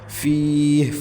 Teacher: لا ریب فیہ، فیہ فا کے بعد یا ساکن، یا ساکن سے پہلے فا کے نیچے زیر، تو یا مدہ ہے، 1 الف تک کھینچیں گے